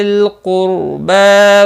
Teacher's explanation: ذل لم ساکن کو ہلانا نہیں، قاف مستعلیہ ہے، پر پڑھا جائے گا، را ساکن سے پہلے پیش ہے اس لیے را ساکن بھی پر پڑھا جائے گا